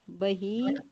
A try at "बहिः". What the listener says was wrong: हाँ, बही। अब आवाज नहीं आई, बही बोला होगा आपने।